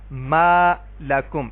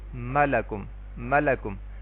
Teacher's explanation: یہ جو میں نے ما لمبا کیا ہے ایک الف کے برابر, تو یہ مد اصلی ہے · ما کو جو میں نے لمبا کیا ہے یہ مد اصلی کی وجہ سے لمبا کیا ہے